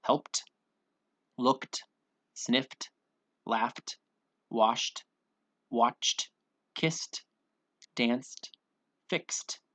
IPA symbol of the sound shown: t